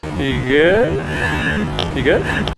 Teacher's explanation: The word good is stressed. The word you is more of a function word and it gets rushed through, gets deemphasized.